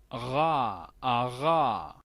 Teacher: aquí necesitamos agregar una R uvular